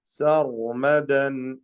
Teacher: സർ എന്നുള്ള വിറയൽ വേണ്ട. ഒറ്റ റാ മതി. അത് തടിച്ച റാ ആയിരിക്കണം. സർമദൻ ഓക്കെ, ഓതിക്കോളി.